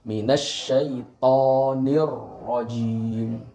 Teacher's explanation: huruf ro disini dibaca tafkhim atau tebal karena rok disini yaitu berharokat fathah